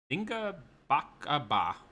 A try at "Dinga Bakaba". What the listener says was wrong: Yeah, just do it a little quicker. Dinga Bakaba.